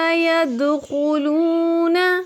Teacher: واو مدہ ہے، تقریباً 2 سیکنڈ تک اس کو بھی کھینچیں گے